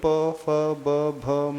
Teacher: प वर्ग के उच्चारण में हमारे दोनों होठों का प्रयोग होता प पूरे दोनों टच होंगे तभी प फ ब भ म